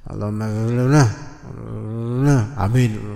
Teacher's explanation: Hanya yang penting ujung kalimatnya ditinggiin intonasinya.